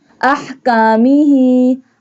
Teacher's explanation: ha pronounced from the middle part of throat.